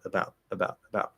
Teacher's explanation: that first syllable is uh right it's just a little schwa sound if i say it clearly uh it's fine but about about